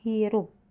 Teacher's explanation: Faring bersama dengan radiks atau akar lidah menghasilkan bunyi H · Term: bunyi faringal